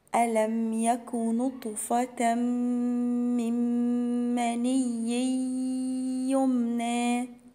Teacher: نون ساكنة وراها الميم فيها إدغام بغنة